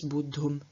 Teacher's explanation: Of bud, we have the same kind of buddha sandhi as we also saw in ta-Participles and absolutives. So, bud, the root ending in a voiced aspirate, causes the T of the tum to become voiced and aspirated itself, so to change into dum, and then the voiced aspirate at the end of the root loses its aspiration, and so instead of bud, we have bud.